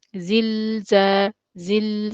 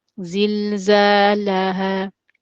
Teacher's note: so you're staying on the lam, the second lam, but with the sukoon slightly longer than the lam with the fatha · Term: sakin letter